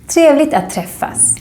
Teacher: here we don't pronounce the G so much. It's like we're saying trevligt, not trevligt.